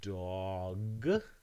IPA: d ɔ g